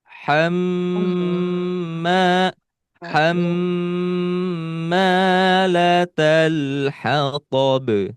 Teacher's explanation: Di hamma, ini ditahan dulu. Ditahan dulu 3 ketukan. Jadi ketukan itu tu, 2, 3.